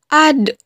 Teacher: dalam keadaan mati huruf d terdengar suaranya memantul · Keluar dengan cara menyentuhkan ujung lidah ke gusi bagian atas, bagaimana kita melafalkan huruf ta. Dalam keadaan mati, huruf da terdengar suaranya memantul.